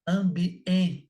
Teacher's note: Som de A nasal e E nasal